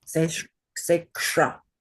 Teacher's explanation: that is a guttural ka and a cerebral shra jammed together into a compound consonant.